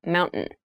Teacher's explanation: when you pronounce this word in fast speech, it sounds like mountain. The T sound is reduced.